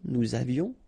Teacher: final S not pronounced, and then little liaison